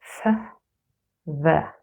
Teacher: They are both formed when my top teeth touch my bottom lip. The air flows out on either side and also a little bit in between. F, V. Also note that you can say a fricative for as long as you have breath. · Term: labiodental fricatives